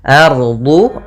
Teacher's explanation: Kemudian di sini alif lam qamariyah lagi, lam dan alifnya tertulis dan dibaca. Ardu, ra-nya tebal yaitu ra tafkhim karena dia ada huruf ra sukun dengan fathah.